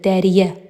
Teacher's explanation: Dərəyə sözünün tələffüzü də dəriyə olduğu üçün bu sözdə yalnız gen saitlər yox, həm də qapalı saitlər var. Deməli, burda uyğunluq pozulmuşdur.